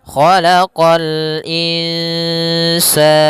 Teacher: qo juga huruf istila pangkal lidah terangkat